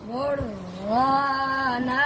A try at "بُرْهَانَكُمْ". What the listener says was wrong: ओ हा को क्यों मोटा पढ़ दिया है